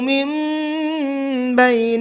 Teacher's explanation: یہ نون نہیں پڑھا جائے گا بلکہ یہ چھوٹا والا میم پڑھا جائے گا اور تھوڑا سا غنہ کر کے پڑھیں گے